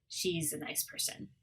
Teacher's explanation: She's a nice person, she is turns to she's, it's contracted, and A turns into a schwa, the sound. The S and IS joins the A and almost becomes a Z sound.